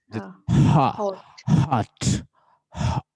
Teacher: इस तरह की साउंड जो गले से निकलती है उसको कहते हैं ग्लोटल साउंड